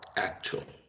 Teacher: I count 2 syllables, and I think the stress is in the first one.